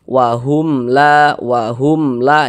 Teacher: Maka hukumnya izhar syafawi. Baca jelas tak berdengung, baca pendek saja.